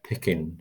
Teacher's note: that second vowel that's the schwa sound